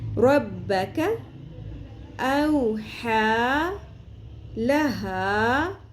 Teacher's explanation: کاف کو پر نہیں کرنا، یہ باریک پڑھیں گے نرمی سے